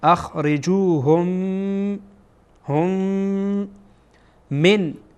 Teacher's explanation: میمی که در اینجا میبینید ادغام میشه. چرا؟ چون بعد از میم ساکن میم دیگری آمده